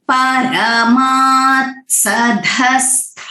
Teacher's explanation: परमात् सधस्थात्, तो यहाँ पे ध जो है महाप्राण है और स्था जो है वो महाप्राण भी है और दीर्घ स्वरिता भी है